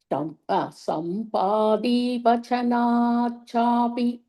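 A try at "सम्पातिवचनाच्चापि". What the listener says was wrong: And then the T is Kuril. It is not Dirgha.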